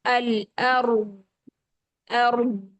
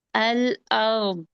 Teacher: آواز منہ میں جمی رہے گی، ٹھہری رہے گی استطالت کی وجہ سے